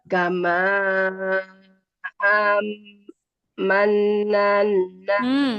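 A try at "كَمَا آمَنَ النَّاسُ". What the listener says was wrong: A-nya panjang dulu. Amananna.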